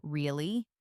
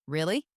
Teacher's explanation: your voice goes up slightly at the end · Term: rising tone